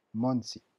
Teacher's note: le O se prononce O, le N se prononce N. Il n'y a pas de nasalisation